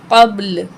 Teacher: बा साकिन है, यहाँ पे कलकला करेंगे। क़ब, लाम पेशलू, क़ब्लू वक़फ़ करेंगे तो लाम भी साकिन हो जाएगा। · कब कब लाम पेश लु कबू वकफ करेंगे तो लाम भी साकिन हो जाएगा। अब दोनों साकिन हमने पढ़ने हैं। दोनों की आवाज निकालेंगे।